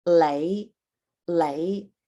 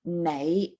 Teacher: n often almost exclusively for some words is now pronounced with an l sound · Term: lazy pronunciation